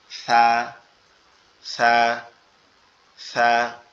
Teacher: আমাদের জিহ্বার আগা উপরের দুই দাঁতের আগার সঙ্গে লাগবে, এই অংশে লেগে উচ্চারিত হবে সা সা সা।